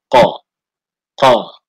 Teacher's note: keluar dari pangkal lidah menempel pada bagian daging yang lunak dari langit